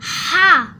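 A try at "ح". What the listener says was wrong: হাটা একটু চাপিয়ে বলতে হয়। হা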